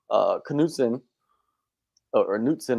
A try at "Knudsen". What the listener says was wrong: I think they pronounced K. They were pronouncing the K.